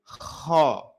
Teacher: Dia menebal. Kalau menebal, maka pelafalannya akan condong pada vokal o, kho. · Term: isti'la